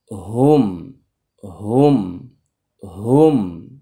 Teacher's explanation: হা এর মাখরাজ হচ্ছে হলকের শুরু থেকে